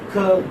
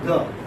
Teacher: Ka is voiceless and ga is voiced.